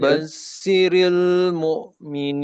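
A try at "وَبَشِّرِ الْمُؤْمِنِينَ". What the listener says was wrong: Shin ya. Bashiril. Tebalkan lagi. Kayak orang ngusir ayam.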